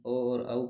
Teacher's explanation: ओ और औ का उच्चारण स्थान कंठ और ओष्ठ दोनों मिलकर करते हैं। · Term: कंठोष्ठम